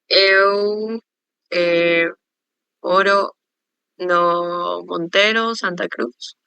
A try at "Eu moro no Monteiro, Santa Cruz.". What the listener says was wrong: Ok, perfeito. Eu moro, né?